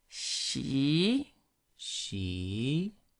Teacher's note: the second one going up